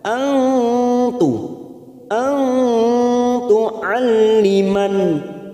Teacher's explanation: nun sukun bertemu ta namanya ikhfa Hakiki kita samarkan tiga harakat